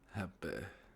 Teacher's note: The last syllable of happy is often close to eh.